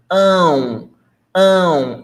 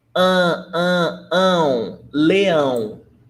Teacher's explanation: Leão, it ends in ão. And I want you to pay attention to the pronunciation. Ão, ão, it's nasal.